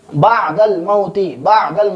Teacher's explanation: عین کو حلق کی درمیانی حصہ سے ادا کریں گے۔